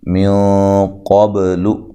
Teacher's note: یہاں نون ساکن کا اخفا مع الغنہ ہے، موٹا اخفا کرنا ہے